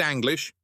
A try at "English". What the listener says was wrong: Nope. It's pronounced with an ENG noise.